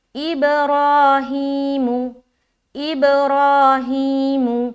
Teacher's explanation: اب اب اب، را موٹا، ہی کھینچیں گے، دونوں جگہ کھینچنا ہے لیکن را کو موٹا رکھنا ہے